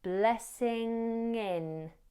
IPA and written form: ˈblɛsɪŋ ɪn (blessing in)